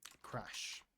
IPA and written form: kræʃ (Crash)